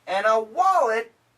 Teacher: the N cancels the D